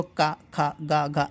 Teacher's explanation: ऐसे बोलोगे तो कहाँ से निकल रहा है, कंठ से निकल रहा है